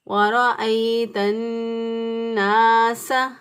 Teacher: تو تا کے اوپر زبر تھی تو تا کے ساتھ نون کو ملا دیا، اور شد والے حرف کو ہمیشہ میں نے آپ کو بتایا تھا کہ مضبوطی اور قوت سے پڑھتے ہیں، اس پر زور ڈالتے ہوئے پڑھیں گے وَرَأَيْتَ النَّاسَ۔ نون زبر الف نا، الف مدہ ہے، ایک الف کے برابر اس کو لمبا کریں گے